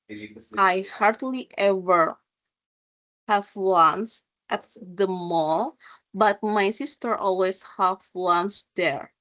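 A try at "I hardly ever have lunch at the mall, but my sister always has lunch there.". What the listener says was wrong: Okay, good job.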